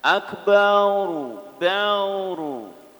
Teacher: Kemudian menebalkan dan memanjangkan ba